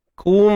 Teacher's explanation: Kaf baris depan. Kena muncul bibir